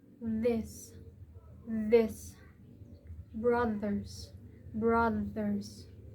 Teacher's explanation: A voiced dental fricative or the soft th has the same tongue position as the hard th but the vocal cords vibrate. It contrasts with a voiceless th.